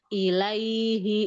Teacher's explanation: Rokhawah huruf ya. Ya sukun, dia sifatnya rokhawah. · kalau dia dibaca normal, ya-nya normal, yaitu huruf ya yang keluar dari tengah lidah. Tapi kalau huruf ya yang lain, dia dibacanya udah jadi hukum mad.